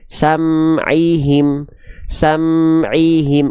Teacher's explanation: Syafatain itu artinya adalah ke kedua bibir. Jadi, ketika kita melafalkan huruf ee izhar syafawi itu harus dibaca jelas dari kedua bibir.